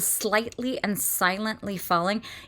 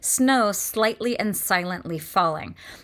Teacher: you have this combination of sibilants, which is those S sounds, together with the liquid L's